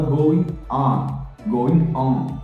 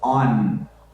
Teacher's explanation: Quando a gente termina uma palavra com a letra N de navio em inglês, a gente tem que terminar com a língua no dente.